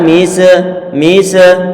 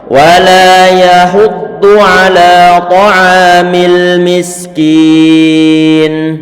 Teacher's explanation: sin itu diantara huruf yang rikhawah, artinya nanti bisa mengucap huruf sin, maka perlu untuk dialirkan suaranya.